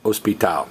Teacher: It's spelled exactly the same, but notice the H is silent.